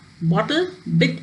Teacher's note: In some accents of English, the glottal stop can replace the sound t